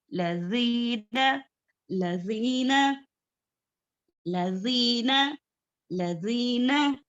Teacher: हमारी जुबान की नोक ऊपर सनाया उलिया के जो दांतों के किनारे हैं, हाँ, वहां पर टच करना है हमारी जुबान की नोक को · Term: जाल का मखरज